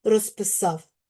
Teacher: А ось коли говоримо в швидкому темпі розписав, то відбувається оглушення.